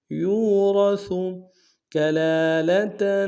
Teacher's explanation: لام کے اوپر کھڑا زبر ایک امتداد میں کھینچیں گے، تاکہ وہ تنوین غنہ کریں گے۔